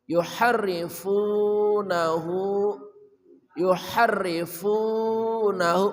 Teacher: ha dari tengah kerongkongan